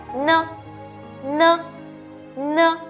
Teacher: 有感受到你鼻腔里面的那一股震动吗